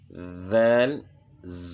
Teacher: نیچے دانتوں کے ساتھ زبان ٹچ نہیں ہوگی، سامنے والے اوپر کے دو دانت جو ہیں ان کے ساتھ زبان کا سرا ٹچ ہوگا، اور نیچے دانتوں کے ساتھ زبان ٹچ نہیں کرنی کیونکہ پھر زا بن جائے گی، یا رف بن جائے گا زا۔